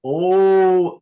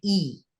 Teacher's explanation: when you have that o vowel oh that is a much darker resonance than e